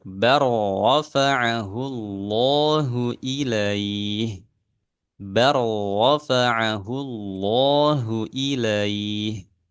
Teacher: Jadi lamnya dilewatkan langsung masuk ke huruf ro. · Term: idgham